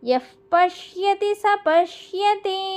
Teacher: ప కి ముందు వచ్చే విసర్గ ని ఎఫ్ సౌండ్ తో పలకాలి.